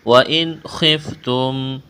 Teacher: نون ساکن کے بعد خواہ حروف حلقی ہے، تو یہاں پر اظہار کریں گے، آواز ناک میں نہیں چھپائیں گے، غنہ نہیں کریں گے